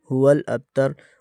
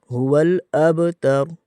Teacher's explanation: ہلکی سی جنبش ہوتی ہے، قلقلہ ہوتا ہے، جو کہ ہم نہیں کرتے، تو یہاں پر قلقلہ ہوگا۔